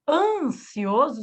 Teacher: Por exemplo, em máximo, você ouve o S do X, o sibilar do X, e você ouve o I, máximo. Ansioso, você não ouviu o N de navio, de não. Então, ele juntou com a vogal, por isso que virou um dígrafo vocálico.